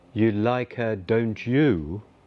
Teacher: Although it is a question, it has an affirmative meaning. Intonation goes down on the last words.